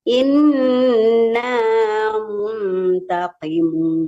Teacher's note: inna kasiful adzabi qolilan innakum aidun yauma nab yauma nabtis yauma nabtisul bahatal kubro inna muntaqimun di qfnya di ee membaca qfnya itu kalau kasrah ibu tetap bacaannya tebal ya muntaqimun memang asli qof itu hurufnya tebal